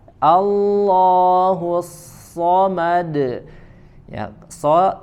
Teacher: so harokatnya fathah ya maka tidak dibaca dengan memojokkan kedua bibir